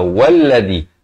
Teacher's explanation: hamzah wasal bukan di awal kalimah. Jadi dia tak baca wa alladhi, tapi kita baca walladhi.